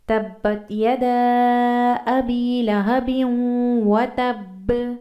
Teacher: یہاں پر با پر ہم نے زور دیا ہے تھوڑا زیادہ کیونکہ اس کے پر تشدید آ گئی ہے